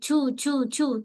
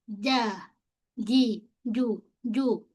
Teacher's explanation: Kemudian pada jim du, pastikan pada jim jangan berangin, jangan sebut cuu cu tak nak jim. Kita fokus bahagian tengah lidah kita. Okey. Tengah lidah dengan langit keras. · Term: huruf jim